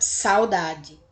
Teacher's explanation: O U é pronunciado, mas é um pouco mais fraco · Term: semivogal